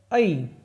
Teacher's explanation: ए और ऐ दोनों को उच्चारण स्थान होता है कंठ तालु